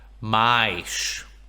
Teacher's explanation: those S's are at the end of syllables, so they sound like sh's.